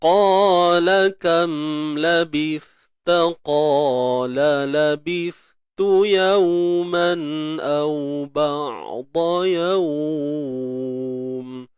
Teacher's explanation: Qa tebal baris atas, tebal selamanya. Isti'la angkat pangkal lidah.